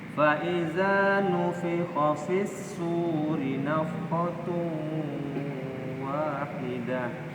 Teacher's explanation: Setelahnya ada disambung oleh waw ya, sehingga dia di sini ya, nun mati itu langsung masuk ke dalam waw ya, dan ditahan ada 2 rokat ya. Makanya dia menjadi dengung ya. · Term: idgham